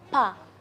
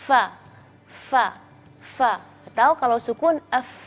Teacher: gigi seri depan bagian yang dua itu harus menyentuh bibir bagian dalam yang bawah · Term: huruf fa